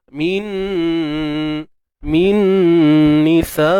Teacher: Okey, idgham bi gunnah. Masukkan nun mati ke dalam nun. Alright. Bi gunnah dengan dengung yang sempurna, kadar 2 harakat sahaja. Min nisa. Kat sini juga boleh juga kalau disebut idgham mutamassilain ataupun idgham mislain ya.